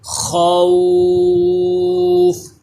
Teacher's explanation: تو یہ خوا جو ہے حروف مستعلیہ ہوتا ہے اس لیے پر بھی پڑھیں گے. · عارضی سکون کی وجہ سے اس وقت کھینچ کر پڑھیں گے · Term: مد لین عارض